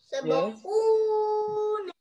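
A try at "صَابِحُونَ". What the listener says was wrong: Not too much. Sabahuna. Only equals to one.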